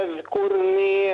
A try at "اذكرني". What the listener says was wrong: فخم الراء. اذكرني.